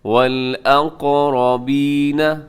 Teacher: قاف موٹا پڑھا جائے گا، ساتھ قلقلہ بھی ہوگا